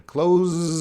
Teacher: Don't be tricked by that S. It's not an S sound. Close. We have the vibration.